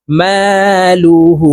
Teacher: লু হা উল্টা পেশ হু হার উপরে উল্টা পেশ আছে তো এই হাকে ঠোঁট গোল করে এক আলিফ টেনে পড়বো